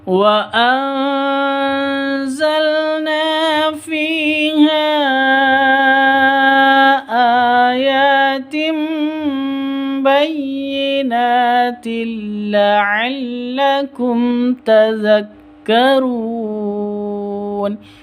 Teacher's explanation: mim sukun bertemu dengan ta, bacaan izhar safawi, dibaca jelas